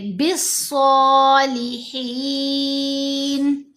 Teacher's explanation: حروف شمسی سے پہلے جب الف اور لام دو حروف اکٹھے آتے ہیں تو دونوں سائلنٹ رہتے ہیں · با کو سیدھا صاد کے ساتھ ملائیں گے. صاد حروف شمسی میں سے ہے.